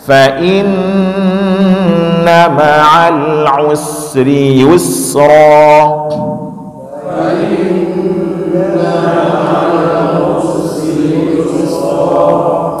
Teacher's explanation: ini diusahakan antara us dengan ri jangan putus, Pak, ya. Usri jangan putus.